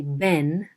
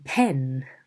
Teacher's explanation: Pronounce a strong puff of air when pataka are in initial position in a stressed syllable. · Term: aspiration